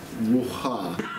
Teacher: technically it's ruha. And there's a glottal stop in the middle.